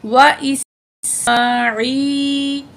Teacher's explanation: اس سین میں سیٹی والی آواز ہوگی، میم کے اوپر کھڑا زبر ہے، 1 الف کے برابر کھینچ کے پڑھیں گے۔